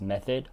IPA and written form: ˈmeθ.əd (Method)